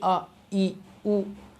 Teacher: लेकिन ध्वनि स्वर में जब आप बोलेंगे अ, ई, उ, तो कहीं भी कुछ टच नहीं हो रहा है और ध्वनि निकल रही है। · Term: स्वतंत्र ध्वनियाँ